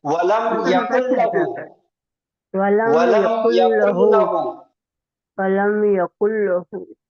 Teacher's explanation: نون کی آواز بالکل بھی غائب ہو جائے گی، مل جائے گا لام کے اندر. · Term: ادغام